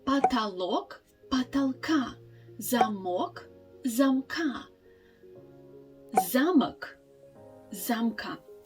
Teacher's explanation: this short o sound disappears when we actually change the form of this noun in genitive case